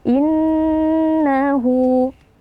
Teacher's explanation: Nah, di sini terdapat nun tasydid ya. Nun tasydid wajib kita baca dengan gunnah ya, yang kita tahan atau kita panjangkan sekitar 2 hitungan pelan ya, jangan terlalu cepat atau jangan terlalu lama.